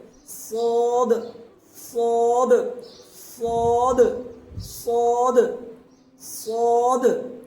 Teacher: اس کو آسان بھاشا میں ہے کہ بھاری آواز میں اوپر کی دانتوں کی جڑ سے ادا ہوگا، زبان کی نوک اوپر کی دانتوں کی جڑ سے